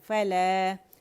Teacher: آپ اسے مد اصلی پر ختم کریں گے. فلا 2 کاؤنٹس کھینچیں گے فلا, اور جب روانی کریں گے تو پھر آپ روانی میں اس کو مد منفصل کی طرف پڑھیں گے.